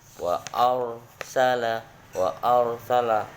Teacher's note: Maka dibaca tebal ro-nya itu, ro matinya.